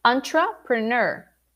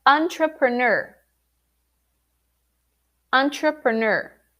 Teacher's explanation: the emphasis is in the final syllable